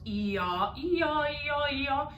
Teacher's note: it's a closed vowel opening up to an open vowel. So even when you say the vowels E-ah, E-ah, E-ah, E-ah, you'll notice that my mouth isn't doing a whole lot.